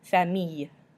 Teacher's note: this has just got an E at the end, which is not pronounced, so you just end with that Y sound.